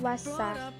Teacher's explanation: Ketika dibaca huruf alif lamnya tidak tampak, tetapi dimasukkan ke dalam huruf yang ada di depannya, yaitu huruf shin. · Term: alif lam samsiyah